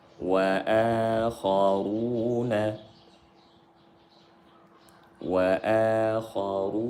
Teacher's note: Kha tebal. Ru tebal. Karena berharakat dhammah. Dia ada waw sukun setelah dhammah dibaca 2 harakat.